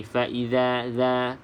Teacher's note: Huruf za saya sering ingatkan tuan-tuan dan puan supaya sebut dengan betul, iaitu hujung lidah ni. Hujung lidah kena pada gigi atas depan.